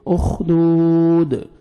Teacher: دال ساکن ہو جائے گا, قلقلہ ڈبل ساؤنڈ آئے گا.